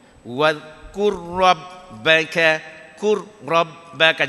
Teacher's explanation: Kur tu jangan terlalu getar sampai 3 kali.